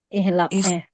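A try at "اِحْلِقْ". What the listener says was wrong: Ihliq. Karena di sini lamnya kasra. Kok berubah kok amarnya? Amarnya jangan berubah ya. Jadi harus ikut persis di ya di mudhari'nya kasrah ya ainul fi'nya kasrah ya berarti amarnya juga masih kasrah ya nggak berubah ya.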